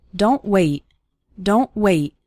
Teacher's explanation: a T sound at the end of a word, sounding just like a sudden stop and not necessarily like t.